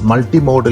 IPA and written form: ˌmʌltiˈmoʊdəl (multi-modal)